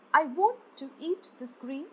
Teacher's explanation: i is unstressed and want is stressed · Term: unstressed followed by a stressed